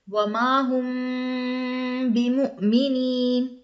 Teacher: میم ساکن کے بعد با آ جائے تو وہاں ہوگا اخفا، یعنی اخفاء شفوی ہوگا، غنہ کر کے پڑھیں گے